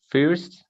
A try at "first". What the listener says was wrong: Me lo estás pronunciando entre español e inglés. First. Haz de cuenta que la I se convierte en una O. First.